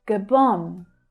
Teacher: The second syllable there is the stressed one. The first one reduces to the schwa.